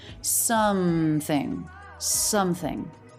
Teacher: the th in something that is an unvoiced th so the tongue tip does have to come through the teeth there don't hold the air though or force it the air should